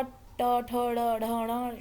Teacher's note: ण का उच्चारण मूर्धा स्थान है जो कि ताल के थोड़ा पीछे और ऊपर की ओर होता है